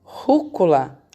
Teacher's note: Rúcula, a sílaba mais forte da rúcula é o ru. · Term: proparoxítona